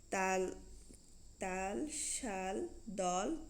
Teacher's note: অর্থাৎ এই ধ্বনি উচ্চারণের সময় বাতাস জীবের পেছনে এক পাশ বা দুপাশ দিয়ে বেরিয়ে যায় এবং জীব দাঁত অথবা দন্তমূলে অবস্থান করে। তাল, শাল, দল প্রভৃতি শব্দে আমরা যে ল হসন্ত ধ্বনি শুনি তা পার্শ্বিক ধ্বনি। ল হসন্ত ধ্বনি হচ্ছে পার্শ্বিক ধ্বনি, আর র হসন্ত ধ্বনি হচ্ছে কম্পিত ধ্বনি।